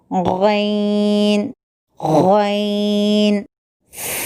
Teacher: حلق کے ابتدائی حصے سے یعنی منہ کی طرف والے حصے سے غین ادا ہوتا ہے